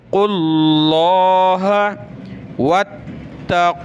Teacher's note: वत्तक़ुल्लाह, वाव ता ज़बर वत, ता ज़बर ता, वत्ता। लफ्ज़ अल्लाह से पहले क़ाफ पर पेश है तो लफ्ज़ अल्लाह को मोटा करेंगे। क़ुल्लाह, वाव को नहीं पढ़ना, क़ाफ के बाद डायरेक्ट लफ्ज़ अल्लाह पढ़ेंगे।